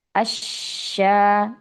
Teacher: Shin bertasydid disempurnakan. Asya, jangan buru-buru memberikan harokat shinnya